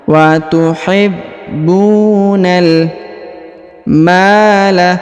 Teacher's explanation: huruf ma dipanjangkan 2 harokat karena di depannya terdapat alif